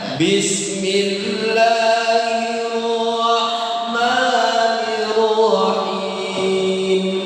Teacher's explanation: H itu harus tepat di tengah-tengah tenggorokan dan sifatnya harus benar-benar bersih